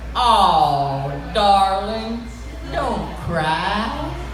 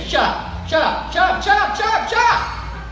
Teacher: when you want to be friendly, like people from Alabama, you spread out your vowels